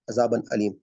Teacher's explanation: تنوین کو ظاہر کر کے پڑھیں گے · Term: اظہار